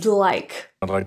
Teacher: the D in I links to like resulting in like I'd like to thank you for your time · there's no release of the tongue tip for D to L what actually occurs is that the sides of the tongue which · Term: lateral Glide